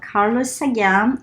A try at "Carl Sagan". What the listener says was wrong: So you call him Carlos. But here it's Carl Sagan.